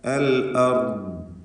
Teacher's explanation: ദ്വാദിൽ റഖാവ നൽകിക്കൊണ്ടാണ് വഖഫ് ചെയ്യുക.